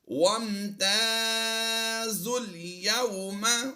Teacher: وَامْتَازُوا الْيَوْمَ، یہاں پر غور کیجئے، زا کے بعد واو، الف، پھر الف، یہ تین حروف خالی ہیں تو تینوں ہی کو ہم نہیں پڑھیں گے۔ زا کو ڈائریکٹ ہم نے لام کے ساتھ پڑھنا ہے پیش لگا کر، زا لام پیش ذل۔